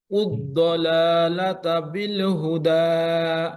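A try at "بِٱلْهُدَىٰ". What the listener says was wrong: আম ধরেন যেন বিলে না হয়, বিল হুদা।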